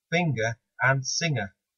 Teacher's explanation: the g is pronounced separately in finger but not in singer